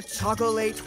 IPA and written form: ˈtʃɔ koʊ leɪt (chocolate)